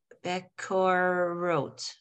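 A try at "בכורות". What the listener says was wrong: Check out that second letter. Bechorot. It's a ha.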